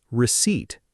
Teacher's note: The p just isn't there.